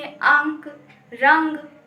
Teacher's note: अनुस्वार के उच्चारण में वायु केवल नासिका से निकलती है